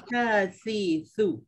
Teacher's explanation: Satu lagi mahraj dari lidah bila lidah kena keluar antara dua gigi iaitu huruf sa, huruf zal, huruf za. 3 huruf ni kita kena ingat lidah tu tak banyak sikit kena keluar masa menyebutnya.